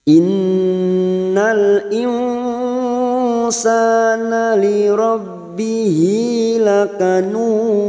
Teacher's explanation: Nun yang bertasdid gunnah musaddadah. Kita tekan selama 3 harokat dan kita tahan.